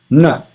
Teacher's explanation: Tip of the tongue will touch the teeth. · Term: Dantya or dental syllables